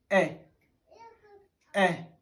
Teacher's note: in the course of articulation the lips are not rounded but slightly apart · in the course of articulation the position of the tongue is neither too high nor too low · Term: vowel sound e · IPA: /e/